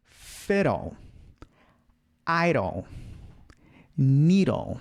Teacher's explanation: o D fica com esse som de R